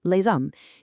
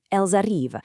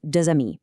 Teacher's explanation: that Z sound acts as this massive indicator to the listener that you're talking about something plural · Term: Systematic liaisons